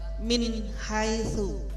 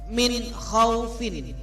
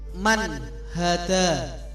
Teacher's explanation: wajib dibaca jelas tanpa mendengung. Cara membacanya adalah jika nun sukun atau tanwin bertemu dengan salah satu huruf 6 ya, yang sebutkan tadi, maka bunyi nun sukun atau tanwin harus jelas. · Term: idhar halki